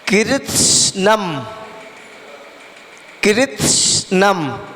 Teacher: सा का उच्चारण नहीं होगा, सा का तो केवल हल्का सा यानी कि साइलेंट हो जाएगा और हल्की सी वायु निकलेगी और उसके बाद में नम।